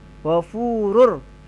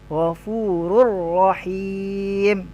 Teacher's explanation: Ghafurur, hilang runnya, langsung ke ro. Ghafurur rahim.